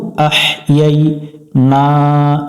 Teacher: আহইয়াইনা এখানে আহ ইয়াই ইয়াই ইয়ার পরে আবার ইয়ার উপরে সাকিন আছে, এখানে অনেকজন ভুল করে আহ, এটা লম্বা হা একটু হলকের মধ্য থেকে বাতাস বের করে উচ্চারণ করব